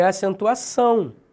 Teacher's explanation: indicar a nasalização ou seja um som nasal da vogal